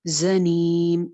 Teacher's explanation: زا سیٹی کے ساتھ ہے، نیم پہ ہم مد عارض کر کے رک رہے ہیں، میم پہ وقف کر رہے ہیں، زنیم.